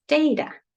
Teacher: is going to tell us that the first one in data the first syllable is going to be the one that's going to stress